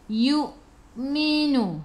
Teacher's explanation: Hamzah ada baris sukun, kena baca dengan putus.